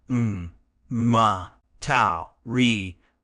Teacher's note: It's pronounced ma, tau, ri, with the stress on the first syllable